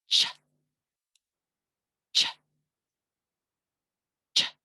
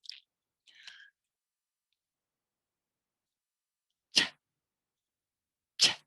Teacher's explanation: It's a t and a sh. We have a build up with the t and explode it into the fricative.